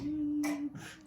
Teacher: It's a quiet sound and you need your mouth open and the back of your tongue up. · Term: k sound